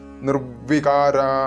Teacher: ഒന്ന് ദിത്വമായിട്ടാണ് ഉച്ചരിക്കേണ്ടത് അതുകൊണ്ടാണ് ഇവിടെ നിർവികാര നമ്മുടെ കീഴ്ചുണ്ട് മുകളിലത്തെ പല്ലിൽ വെച്ചുകൊണ്ട് അമർത്തികൊണ്ടാണ് നിർവികാര എന്ന് ഉച്ചരിക്കേണ്ടത്